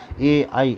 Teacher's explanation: कंठ तालव्य माने कंठ भी और तालु भी तथा जीभ भी